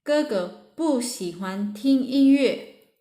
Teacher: Because 喜 is the third tone, so we pronounce 不 as the fourth tone.